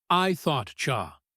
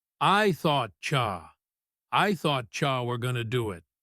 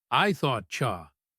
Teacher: The T in thought blends with the Y in you to make a ch sound.